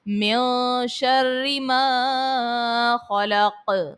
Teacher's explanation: خلق میں خو کو پر پڑھیں گے، موٹا پڑھیں گے، حرف مستعلیہ ہے، اور قوف میں پھر وہی بات آ گئی ہے کہ حرف قلقلہ کو جب ساکن کرتے ہیں تو قلقلہ کو خوب ظاہر کر کے ادا کرتے ہیں۔